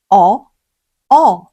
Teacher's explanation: 어, 우, 어의 중간 소리쯤이라고 생각하시면 좋겠네요.